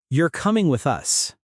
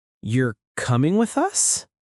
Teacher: You hear that little lift in your voice at the end? That melody is called intonation.